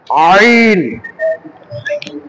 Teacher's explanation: আইনটাকে কণ্ঠনালীর মধ্যখান থেকে একটু চেপে উচ্চারণ করতে হয়